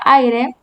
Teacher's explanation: vemos la unión de A, vocal abierta, con I, vocal cerrada, formando dictongo.